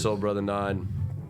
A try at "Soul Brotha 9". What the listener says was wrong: Brotha. Yeah, with the A.